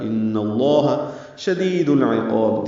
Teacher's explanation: عقاب میں عین وسط حلق سے ادا ہوگا، قاف پر پڑھیں گے اور اس کو لمبا کریں گے، با ساکن پہ قلقلہ ہوگا وقفاً. مد عارض میں سکون ہے اور با پہ قلقلہ ہے، قاف کو اسی لیے لمبا کرنا ہے.